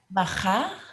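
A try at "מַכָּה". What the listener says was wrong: Maka. remember it's the hard sound. Got the dot in the middle. Maka.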